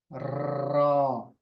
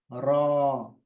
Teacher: और आवाज मुंह के अंदर ही रहेगी, इसकी मुंह के अंदर जाएगी, रॉ, बाहर नहीं आएगी, रॉ। तो ये जो मसोड़े हैं, मसोड़ों के पास थोड़ा सा उभरा हुआ हिस्सा है, वहां पर आप जबान को लगाना है और अंदर की तरफ खींचना है, तो उससे रॉ की आवाज होगी। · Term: तकरार